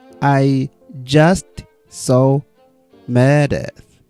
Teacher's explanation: All linked together, smooth pitch changes, no skips, no breaks.